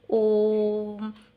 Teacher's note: जो हम ओ को खींच के बोल रहे हैं ना थोड़ा, तो यही हमारा त्रिमात्रिक स्वर है। और हम इसको एक नाम से और जानते हैं, इसको हम कहेंगे प्लुत स्वर।